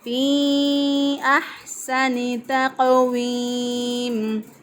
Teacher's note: تقویم، ہا کو وسط حلق سے ادا کیا، گلے کے درمیان سے ادا کیا